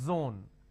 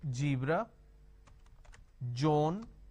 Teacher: for example zeal okay now what people make a mistake is they replace the z with a j so what they do is they pronounce this as jibra john